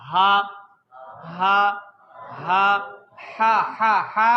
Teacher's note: یہاں پہ ہاتھ رکھنا ہے بچوں کے. بیٹا یہ اس کی مخرج ہے گلے کا نیچے والا حصہ